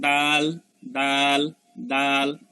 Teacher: তাইলে দাল দেখেন কোথা থেকে আসতেছে, জিহ্বার আগা উপরে দাঁতের মধ্যে লাগতেছে